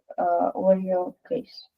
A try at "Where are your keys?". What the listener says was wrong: Where are your keys? Yeah, keys. It sounds strange, but this word is pronounced keys. It's not the letter K.